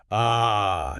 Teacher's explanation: It doesn't pull back. It just relaxes dead in the center of your mouth. Your lips are neutral. Your jaw is slightly open. And you just let out a little grunt of air. · Your tongue doesn't stretch high. It doesn't push forward. It doesn't pull back. It just relaxes dead in the center of your mouth. Your lips are neutral. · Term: schwa